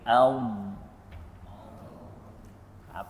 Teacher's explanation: Istitalah ini ialah satu-satunya sifat yang mempunyai a makhraj dia yang panjang iaitu sepanjang tepi lidah. Dia tepi eh tepi bahagian hujung tetapi dia tak sampai ke hujung. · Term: sifat istitalah